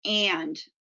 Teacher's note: For example, choosing the word apple as the keyword for the sound ah instead of the word and, where the ah sound is distorted due to the nasal consonant that follows it